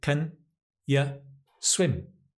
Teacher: Stress on the swim.